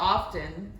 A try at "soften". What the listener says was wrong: But you don't pronounce the T in soften. Y'all laugh, but I always pronounce the T. Soften.